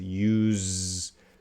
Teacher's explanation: So the consonant is S, but the sound is Z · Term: Z sound